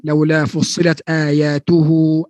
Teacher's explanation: Hamzah yang dikelabukan, yang diringankan bunyi antara hamzah dan mad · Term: hamzah tashil